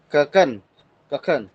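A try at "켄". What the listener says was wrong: Ken. Jadi bukan keken tapi ken.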